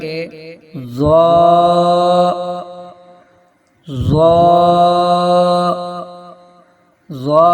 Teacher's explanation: ادا کرتے وقت زبان کی نوک ثنایا علیہ کے سرے سے لگے تو ضا ادا ہوتا ہے